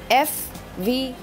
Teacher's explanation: when the upper incisor and the posterior one-third of the lower lip meet together to produce the sounds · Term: labio-dental sounds